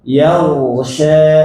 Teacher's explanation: Nah ini ghain tebal. Yaghsha. Bukan hanya tebal tapi dialirkan. Yaghsha. Nah gitu ya, baca huruf ghain alir.